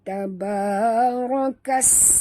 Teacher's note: Bunyikan safir pada sin yang mati.